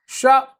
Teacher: श का उच्चारण स्थान तालु या तालव्य है। इसको तालव्य श भी कहते हैं।